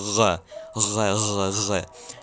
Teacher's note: It's a guttural sound you produce in your throat.